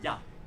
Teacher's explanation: the French will say ya, not il y a, every single time